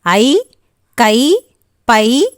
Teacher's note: ஐகார எழுத்து தனித்து வரும் இடங்களில் தனக்குரிய 2 மாத்திரை அளவில் முழுமையாக ஒலிக்கும்